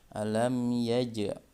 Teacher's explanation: dari huruf Jim sukun Qalqalah atau dipantulkan